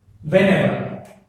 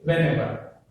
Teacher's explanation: so the stress is on the ever